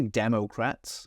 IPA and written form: ˈdɛməʊkræts (Democrats)